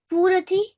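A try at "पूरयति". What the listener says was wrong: This will have ya, purayati.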